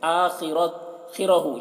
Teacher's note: خا کو پور پڑھیں گے، خا حروف مستعلیہ میں سے ہے، را کو بھی پور پڑھیں گے